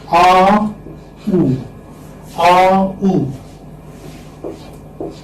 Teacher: AU is a glide from back open unrounded vowel to back rounded vowel. U, because it is U, back rounded vowel between close and half close position.